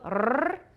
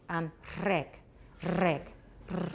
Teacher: So instead of a regular alveolar trill, rrr, you're putting your tongue closer up, so we're getting noise because there's air rushing through a smaller space. So like reg, reg, rrr.